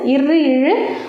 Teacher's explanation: இரு, இழு ஆகிய இருமைகளும் மேல்வாயின் நாக்கின் நுனி வருடுவதால் பிறக்கின்றன